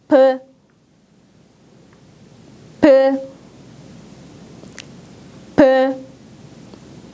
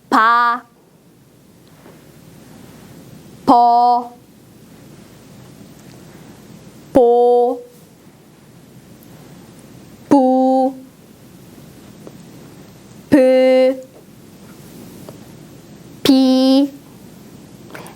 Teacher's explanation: 브 소리는 여러분의 입술, 윗입술과 아랫입술이 닫았다가 떨어지면서 공기가 밖으로 나가는 소리인데요.